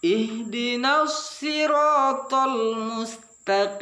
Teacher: So kita memang di situ barisnya bawah, makanya tidak terlalu, memang huruf so itu agak lebih tebal daripada sin